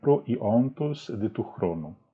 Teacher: Até dei uma pequena pausa entre o pro e o i, para deixar claro que existe um pequeno hiato aí